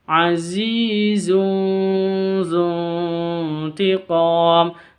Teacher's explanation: samar disertai dengung cara bacanya disamarkan terus · Tanwin berjumpa dengan zal. Bacaan ikhfa, samar disertai dengung.